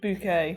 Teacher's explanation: The accent on the second syllable.